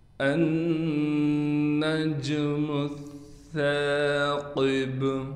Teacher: سا پر تشدید ہونے کی وجہ سے ٹھہراؤ بھی کیا جائے گا، لیکن سا کو ہم باریک کر کے اور اس کے بعد الف ہونے کی وجہ سے کھینچ کر بھی پڑھیں گے۔